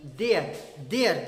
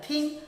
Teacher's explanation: जैसे देयर कहते हैं तो वाइब्रेट होता है, और थिंग कहते हैं तो वाइब्रेट नहीं होता है।